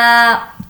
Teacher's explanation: खींच कर पढ़ेंगे क्योंकि अलिफ मद्दा